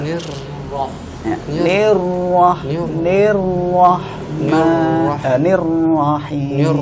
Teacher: Cuma dia kurang ditakrir, kemudian di huruf ro yang kedua dia langsung setelah ni ini dia langsung masuk ro-nya itu langsung tebal. Harusnya tipis dulu. Nir baru ro-nya tebal.